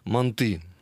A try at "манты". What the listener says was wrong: Вот именно на последнее ударение слова. Манты.